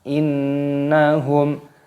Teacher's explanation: ada nun tasdid, ini hukumnya dibaca gunnah. Gunnah itu artinya dengung. Jadi cara membacanya yaitu didengungkan.